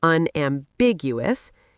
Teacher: Unambiguous emphasizes the second syllable